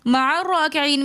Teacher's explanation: ہم عین کو را کے ساتھ ملا کر پڑھ رہے ہیں، درمیان میں حمزۃ الوصل ہے جو درمیان کلام میں آنے کی وجہ سے گر جاتا ہے۔